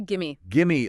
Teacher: The V and give often sort of blends into the M of me.